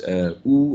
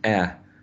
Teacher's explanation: your tongue is closer to the bottom of the oral cavity in terms of length and the first one is longer than the second